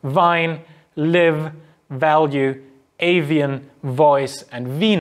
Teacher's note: the voiceless and the voice sounds respectively so this is labiodental the lower lip um reaches up against the upper teeth and the air sort of pressed through between them that produces these labiodental fricatives so there we have and sounds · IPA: [v]